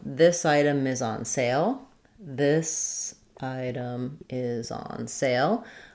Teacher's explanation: Item is going to have a little bit more weight because it's a content word. Is on is going to be unimportant. So it's going to sound like this item is on sale. · Sale is our primary stress at the end.